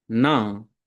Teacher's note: Um detalhe interessante eh de pronúncia é que se a gente for pronunciar certinho, certinho o nam, a gente vai pronunciar na. O M final apenas nasaliza a vogal. Tipo, como a gente faz em português, não, n.